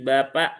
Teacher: ba itu dia tidak punya sifat hames. Jadi tidak ada aliran udara yang ikut keluar dia lebih ringan. Jadi bukan bukan ba bapak tapi bapak ya. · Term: huruf ba